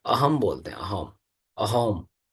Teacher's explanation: असम में स को ह बोला जाता है। ठीक है, हाँ, हाँ, स को ह बोला जाता है, और मूर्धन्य जो श होता है उसको ख बोला जाता है।